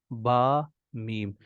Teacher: बा और मीम में आपके दोनों होठ आपस में मिल जाते हैं